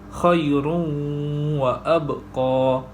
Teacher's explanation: Tanwin bertemu dengan huruf waw dan cara bacaannya ialah memasukkan tanwin ke dalam huruf waw beserta dengung 2 harakat.